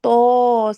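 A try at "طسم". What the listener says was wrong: আপু আপনার তয়ের মধ্যে টানটা বেশি হয়ে গেছে, তয় একালিফ টান।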